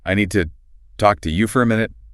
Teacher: Okay, so the important words are need, talk, and minute. Right. If you pronounce every grammar word perfectly, I need to talk to you for a minute, you destroy the rhythm.